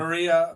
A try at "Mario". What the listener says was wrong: It's Mario, not Maria.